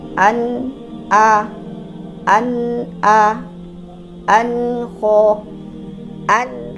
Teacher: ghunah naqis dia ada ghunahnya cuman durasinya pendek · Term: gunah naqis